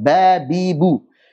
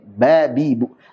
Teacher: Unsur huruf ba, yaitu B-nya, keluarnya dari asy-syafatain, babibu. B-nya itu dari asy-syafatain.